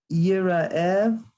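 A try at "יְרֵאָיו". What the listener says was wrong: Yire'av. You just switch the letters, but yes.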